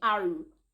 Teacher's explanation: It's heavy in my mouth. It feels like something is stuck in my mouth when I'm pronouncing the r, and my mouth is round. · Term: tafkhīm